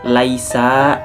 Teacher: Laisa, di sini ada hukumnya madlin karena huruf ya sukun didahului oleh huruf lam berharakat fathah. Jadi dibacanya ini panjang 2 harakat.